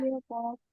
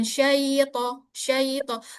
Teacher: huruf lin itu panjangnya 1,5 harokat.